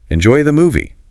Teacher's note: with a friendly upward inflection on movie. It's like a nice little send-off.